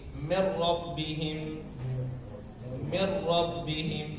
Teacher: bahwasanya ro itu hanya ada satu kali pengulangan dalam pengucapannya, tidak banyak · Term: sifat roh